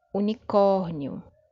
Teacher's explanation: Perceba que agora a sílaba tônica está na penúltima posição.